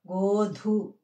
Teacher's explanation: ఇది కూడా మహాప్రాణాక్షరం. గోధు అని గాలి వదులుతూ పలకాలన్నమాట మహాప్రాణాక్షరం.